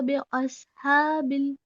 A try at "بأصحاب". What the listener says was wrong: अस बी, बे नहीं, बी, बी